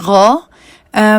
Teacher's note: یہ ناک کی جگہ منہ سے ادا ہونا چاہیے · یہ ہمارے گلے کے اوپر والے حصے سے ادا ہوتا ہے. اس حرف کو ادا کرنے کے لیے زبان جب نرم تالو کے اس حصے کے ساتھ لگتی ہے جس کو ہم کوا کہتے ہیں تب یہ حرف ادا ہوتا ہے. زبان کوے کو یعنی کہ یوویلا کو جہاں پر ٹچ کر رہی ہے وہاں پر آپ کو ایک وائٹ کلر کا ڈاٹ نظر آ رہا ہوگا. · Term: غین